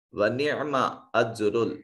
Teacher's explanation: जीम साकिन क़लक़ला वाजिब और रा के ऊपर पेश है, रा मज़मूम होने की वजह से मुफ़ख्ख़म अदा किया जाएगा।